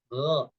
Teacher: Gha ini sifatnya jahar juga, dia nafasnya ditahan, suaranya ditahan.